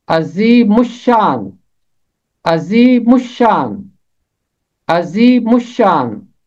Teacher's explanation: پہلا حصہ میم ملے گا شین کے ساتھ، مش، اور آگے پھر تیسرا حصہ ہوگا شان